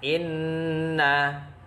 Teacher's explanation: Hukum bacaannya adalah gunnah, cara membacanya dengung 2 harokat.